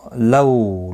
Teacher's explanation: لو واولین ہے، تھوڑا نرمی کے ساتھ کھینچ کر ادا کریں گے